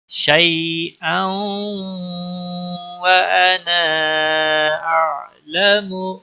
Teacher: انا مد منفصل ہے، 3 الف کے برابر کھینچ کر پڑھیں گے۔ عین پر قلقلہ نہیں ہونا چاہیے۔